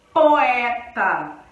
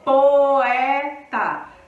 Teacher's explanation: Veja que as duas vogais, elas são fortes. Ninguém perde tom. Poeta. A gente fala o O bem definido e o E bem definido. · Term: vogal e vogal